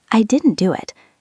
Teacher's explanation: The T links to the D.